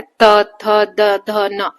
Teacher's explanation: हमारे जो जीभ है, आगे वाला पार्ट है जीभ का, वो दांतों को पीछे टच करता है, त, थ, द, ध, न, है ना, है ना।